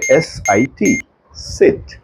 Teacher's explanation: લાંબુ ખેંચવાનું નથી આ લાંબો ઈ નથી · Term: નાનો ઈ